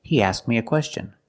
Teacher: You make the position of the K, but you don't release the sound.